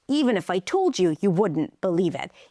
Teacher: So the stressed words are higher in pitch and a little longer and everything else comes together and becomes smaller and softer.